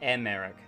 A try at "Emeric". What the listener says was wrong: It's Emeric, yeah. Well, the emphasis is on the first syllable, so it's Emeric.